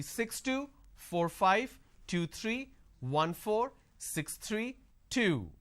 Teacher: That's why it's important the last unit of your string should be louder, but a drop tone.